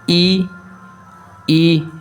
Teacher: यहां से ई और ई यह दोनों स्वर वण निकलते हैं कौन से ई छोटे ई और बड़े ई तालू से निकलते हैं आप उच्चारण करेंगे और समझने की प्रयास करेंगे कैसे इन वर्णों · हमारा जो जीभ है ना वो कहीं ना कहीं तालु की ओर बढ़ता है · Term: तालव्य वर्ण